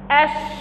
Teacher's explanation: انتشار صوت الشين من مخرجه حتى يصطدم بالصفحة الداخلية للأسنان العليا والسفلى. إذن أثناء نطقك لحرف الشين هتلاحظ أنه من مخرجه بيصطدم بالصفحة الداخلية للأسنان العليا والسفلى. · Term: التفشي